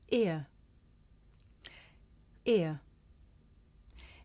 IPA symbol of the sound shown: ɪə